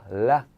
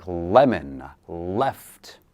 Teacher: So similar to the letter R, you curl the tongue upward, up, but you don't make a bowl, just the tip of the tongue goes up, la, and you touch the tooth ridge. So this is where the teeth meet your mouth. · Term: letter L